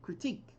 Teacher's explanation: The stress is on the second syllable, critique.